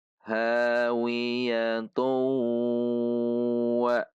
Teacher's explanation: maka dummah tanwin ini dibaca masuk kepada huruf wawu dengan gunah atau idgham bihunah sehingga ketika wasal cara membacanya adalah hawiyatu wa